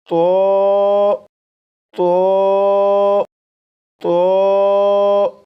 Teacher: इसलिए इस हर्फ को पढ़ने के लिए दो बातों का ख्याल रखिएगा। नंबर एक जबान की नोक ऊपर सामने के दो दांतों की जड़ से लगाकर पढ़िएगा। नंबर दो आवाज को मोटा करके पढ़िएगा। · اس لیے اس حرف کو پڑھنے کے لیے دو باتوں کا خیال رکھیے گا۔ نمبر ایک، زبان کی نوک اوپر سامنے کے دو دانتوں کی جڑ سے لگا کر پڑھے گا۔ نمبر دو، آواز کو موٹا کر کے پڑھے گا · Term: पुर यानी मोटा, پر یعنی موٹا